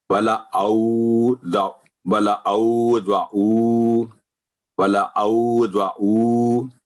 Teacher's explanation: تو یہ خیال رکھنا ہے کہ یہ حمزہ ہے اس کی آواز آئین نہ بنے، اور یہ جو ضعو ہے یہ حمزہ نہ بنے، یہ بھی بڑا احتیاط کرنے والی بات ہے.